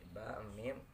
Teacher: Karena penempatan makhrajnya ini makhraj itu ketika waktu ini bertemunya dua bibir antara bibir atas dan bibir bawah. Kemudian itu disebut disebut dengan asyabatain ya.